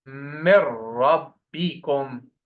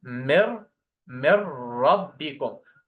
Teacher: Because this is merging with ghunnah. In the ra and lam, we don't do any ghunnah. · Remove the noon, add shadda, no ghunnah.